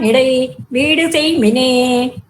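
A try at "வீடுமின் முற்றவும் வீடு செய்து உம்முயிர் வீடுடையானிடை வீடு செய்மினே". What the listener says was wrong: உம்முயிருக்கு அப்புறம் நிறுத்த வேண்டாம். உம்முயிர் வீடுடையான் இடை அப்படி முழுக்க சேர்த்து சொல்லிடுங்க.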